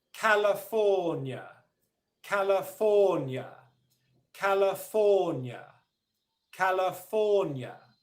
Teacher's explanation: The two syllables that have the second level of stress are ka and nya. There's one syllable that is unstressed, okay, and that's la.